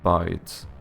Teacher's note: So the letter I ended up being like the diphthong AI.